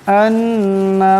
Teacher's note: এখানে নুন মুশাদ্দাদ একালে পরিমাণ গুণনা করে পড়তে হবে